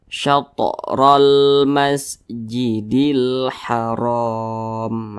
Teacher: ro dibaca tebal karena dia memiliki tanda baca fathah atau baris ke atas.